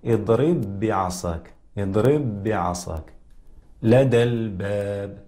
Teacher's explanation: ونلاحظ بأن الإطباق يكون قويا مع الباء، كقوله تعالى: اضرب بعصاك اضرب بعصاك لدى الباب. دل نلاحظ بأن الباء تخرج مع إطباق ما بين الشفتين، ويكون الإطباق قويا مقارنة مع الميم